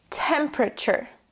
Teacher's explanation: In the second syllable, we drop the E completely and we add a schwa, temperature.